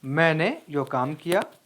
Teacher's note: यहाँ मैंने पर जोर दिया गया है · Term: बलाघात